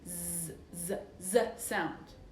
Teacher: if I put my hand on my throat and I feel vibration, like for example, z, z, z sound. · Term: voiced sound